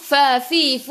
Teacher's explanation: gigi atas menyentuh perut bibir bawah